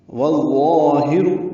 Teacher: والآخر والظاہر واو کو ضا سے ملائیں گے، یہ ادغام شمسی، اب الف لام نہیں پڑھا جا رہا